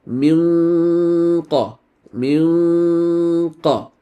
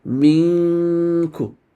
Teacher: Min. So the back of your tongue should not be lifted because this is a kaf and not a qaf. You're preparing to pronounce the letter kaf.